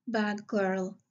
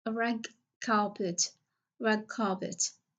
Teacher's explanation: So, we are going to change the d sound into g because it's voiced.